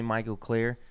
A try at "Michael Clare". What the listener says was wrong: It sounded like you pronounced it Michael with a G.